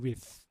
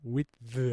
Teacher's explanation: with 하면은 무성음으로 한 거고요. with 하면은 유성음으로 소리를 낸 거고요.